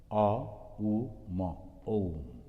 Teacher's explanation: when you are pronouncing the Ma, you are closing the lip without moving your tongue, without beating anything, sound is coming.